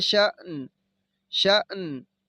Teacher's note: शीन को झटका देंगे और जब नून पे वक़फ़ करेंगे तो इसको हमने पढ़ना है शान